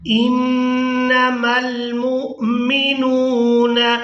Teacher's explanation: میم کو حمزہ ساکن کے ساتھ ملائیں گے تو جھٹکے کے ساتھ ادا کریں گے